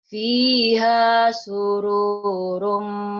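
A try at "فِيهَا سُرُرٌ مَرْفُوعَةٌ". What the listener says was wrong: pendek. Surum. Surum. Pendek.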